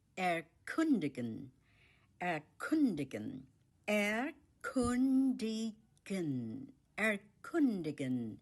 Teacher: The stress is on the second syllable, kun, erkundigen.